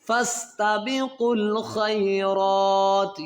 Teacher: قاف کو لام کے ساتھ ملائیں گے، اس واو اور یہ دو بیچ میں الف فتح ان کو نہیں پڑھنا